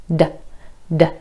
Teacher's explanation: D or D is a stop sound. The air comes up into your mouth, it's stopped by your tongue connecting with the alveolar ridge, and then released as you make the sound.